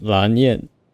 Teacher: In the Chinese, she's like Lan Yan or Lan Yan if you include the tone. So rising and then falling tone